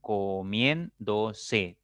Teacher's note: Tiene, ahí veremos 4 sílabas. La mayor fuerza está en la tercera sílaba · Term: esdrújula